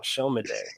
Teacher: So the S in our Yoruba alphabet, that particular S has a SH sound.